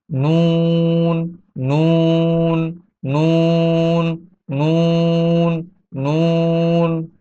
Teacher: জিহ্বার আগা যখন তালুর সঙ্গে লাগবে, তার বরাবর তালুর সঙ্গে লাগবে, তখন নুন উচ্চারিত হবে। নুন উচ্চারণ করার সময় মুখের এরকম একটা শেপ তৈরি হয়।